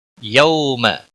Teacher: یوم واو لین ہے، تھوڑا نرمی کے ساتھ کھینچ کر ادا کریں گے